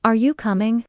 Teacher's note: Rising intonation. For questions, example: are you coming? Voice goes up at the end.